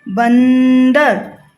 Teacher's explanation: जो ये न का साउंड है वो आपके नाक से निकल रहा है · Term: अनुस्वार